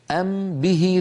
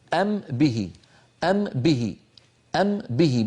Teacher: الميم من الشفتين والباء من الشفتين فبدلا من ان نعيد الوصول الى نفس المكان مرتين بدلا من